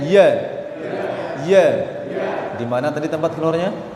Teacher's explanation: di lidah bagian tengah ditemukan dengan langit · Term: huruf ya